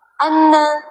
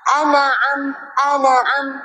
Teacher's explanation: Lidah turun masa nak sebut ain terus. Jangan turun tengah-tengah antara ain dengan nun kat sini.